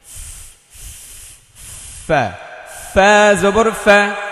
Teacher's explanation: তা তা, ফায়ে বাতাস বের করতে হবে, জিহ্বার আগা, সরি, নিচের ঠোঁটের পেট সামনের উপরের দুই দাঁতের আগায় লাগিয়ে, অর্থাৎ উপরের দুইটা দাঁত নিচের ঠোঁট, উপরের ঠোঁট না, নিচের ঠোঁটের পেটে লাগাতে হবে, মানে একটু ভিতর সাইডে।